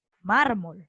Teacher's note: cuando terminan en consonantes diferentes a ns oa vocal y efectivamente mármol la fuerza de voz está en la penúltima